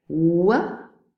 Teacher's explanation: we don't touch the lips together it's not a stop we don't make a very narrow constriction like for a fricative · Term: approximate